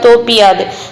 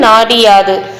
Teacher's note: அந்த உகரம் வந்து இகரமாக மாறும். அப்படி மாறுறப்போ அதற்கான மாத்திரை அளவுல இருந்து குறைந்து ஒலிக்கும். குறைந்து ஒலிக்கிறது தான் குற்றிய லிகரம்.